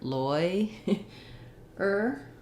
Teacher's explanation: the confusing thing about lawyer is that it actually has the oy diphthong